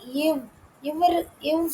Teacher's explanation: கீழ் உதடும் மேல்வாய் பல்லும் இணைவதால் பிறக்கும் எழுத்து